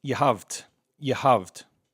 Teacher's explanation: the personal suffix tav is vocalized with a schwa